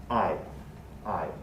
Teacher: this case is a diphthong it's a true diphthong i i a low central to high front diphthong